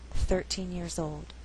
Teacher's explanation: So if I said I was 13 years old, stress is on the first syllable